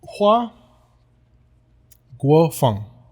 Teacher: I think it's second tone. Second tone. So rising.